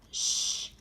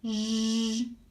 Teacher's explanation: Fat air, you have sh, and then with the voicing on, j, like garage